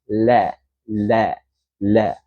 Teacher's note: Lam tu keluar daripada tepi hujung lidah. Letak pada lelangit bahagian depan. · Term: huruf lam